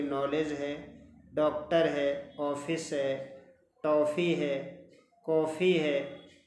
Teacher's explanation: यह बिंदु रहित चंद्र है, मीन्स इसमें बिंदु नहीं रहेगा, जिसका उच्चारण अ के समान होता है, आ के समान नहीं